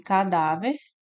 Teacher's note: No item B, nós temos aqui cadáver, separa dessa forma. A sílaba mais forte é o da, nós temos aqui uma paroxítona.